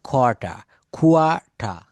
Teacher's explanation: আমরা বলি এটা কোয়ার্টার, আমি সরকারি কোয়ার্টার পেয়েছি, আমি সরকারি কোয়ার্টারে থাকি, এটা কোয়ার্টার না। বলা হচ্ছে ব্রিটিশ অ্যাকসেন্টে শব্দের শেষে যদি আর থাকে, আর এর উচ্চারণটা ব্রিটিশরা সাইলেন্ট রাখে